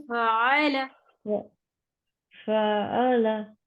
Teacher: फअ अलग से नहीं, फा के साथ ही आइन की आवाज मर्ज कर दें